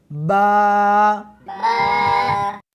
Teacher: اس حرف کو دونوں ہونٹوں کے ساتھ ملا کر پڑھیں گے